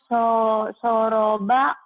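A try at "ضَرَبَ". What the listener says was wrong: Salah soroba mah salah. Salah pada titikan eta mah.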